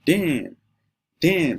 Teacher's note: Damn is the falling tone start from up then goes down.